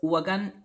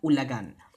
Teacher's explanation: That W and the L are actually allophones, meaning even if they sound differently from each other, they don't change the meaning of the word.